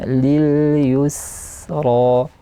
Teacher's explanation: sinnya juga dialirkan nafas secara sempurna, yaitu sifat hams